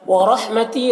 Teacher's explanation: را کے اوپر زبر ہے، را کو پر پڑھیں گے، تی میں یا مدہ ہے۔